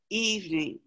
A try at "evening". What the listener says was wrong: You don't really say that second E, just evening. So it's just evening.